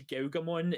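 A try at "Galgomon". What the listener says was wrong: Why do you say Galgamon like Cowgamon? No, Galgamon, not Gaugamon.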